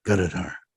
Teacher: Emphasis on the second syllable.